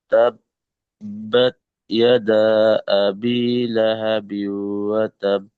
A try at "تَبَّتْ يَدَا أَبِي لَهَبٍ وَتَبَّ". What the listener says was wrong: কিন্তু টানটা একটু কম হয়ে গিয়েছে। এই ইয়াদা আবি, একটু টানটা বেশি করতে হবে, ঠিক আছে?